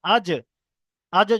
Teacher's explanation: আজ যখন বলছেন জিভের মাঝখানে কিন্তু উপরে তালুর সাথে লাগছে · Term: জিম